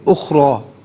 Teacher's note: وما اخرا میں را کو پر کر کے پڑھیں